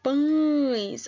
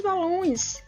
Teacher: parece que o nosso nariz mexe quando nós vamos pronunciar pães